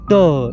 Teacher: जब ट बोलते हैं तो आपकी जीभ ऊपर की ओर उठती है, ट यानी कि एक टकराव खाती है, जैसे जीभ का बैक फ्लिप हो रहा हो।